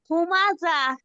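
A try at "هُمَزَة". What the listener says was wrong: আপু আপনার জাটা জিমের মতো হচ্ছে। আপনার জাটা জিমের মতো হচ্ছে। যা জবর যা, আপনি পড়তেছেন হুমা যা। এটা খেয়াল করে পড়তে হবে। হুমা যা, হুমা যা।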